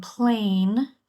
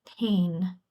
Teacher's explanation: So instead of saying plain, they might say pain. Um dropping that L. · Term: cluster reduction